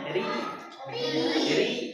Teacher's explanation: Cara kedua ada yang tip tipis. Yang tipis yang kasrah. Yang tipis ketika rnya kasrah.